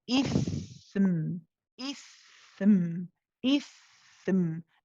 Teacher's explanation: The tha has to be longer than the meme.